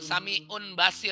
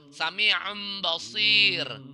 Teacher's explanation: Nun sukun atau tanwin ketemu ba, akhirnya menjadi huruf mim, ditandai dengan mim di atas ba. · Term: iklab